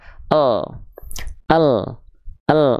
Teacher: bagaimana cara melafalkan huruf yang dalam kondisi mati teman-teman sekalian maka caranya tidak dibaca dengan bunyi vokal a i u maka lamnya enggak dibaca lalilu tapi lamnya dibaca dengan bunyi matinya Apa bunyi mati huruf lam yaitu bunyi konsonan huruf lamnya itu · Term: lam sukun